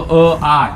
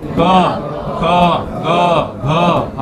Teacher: कंठ म्हणजे गळा. याच्यामधून येतो